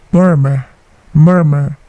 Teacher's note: Huruf R atau R yang terakhir itu tidak dibaca.